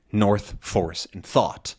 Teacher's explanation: the sounds in north false and thought are all the same